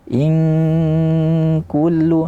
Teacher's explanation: Kaf itu ketika ikhfa dia tidak ada suit, tidak ada bunyi di mulut, karena makhrajnya sempit